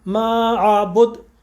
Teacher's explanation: دال کے مخرج میں قوت کے ساتھ جا کے رکیں گے اور وہ ہوگا قلقلہ